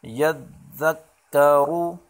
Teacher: یا ذال زبر یذ، ذال کاف زبر ذک، کاف زبر کا، یذک، ذال کو نرمی سے پڑھیں گے، یذک، را پیش روح، را موٹے را کے اوپر پیش ہے تو اس کو موٹا پڑھیں گے، یذکرو۔ اور وقفن میں پڑھی حرکات وقفن میں نہیں پڑھی جاتی تو پڑھیں گے یذکر۔